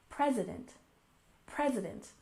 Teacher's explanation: next we have President we stress the first syllable